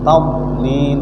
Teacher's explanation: Do bukan huruf qalqalah, tetapi membunyikan huruf do itu seperti qalqalah. Jadi membacanya macam qalqalah.